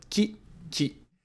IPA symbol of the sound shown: ki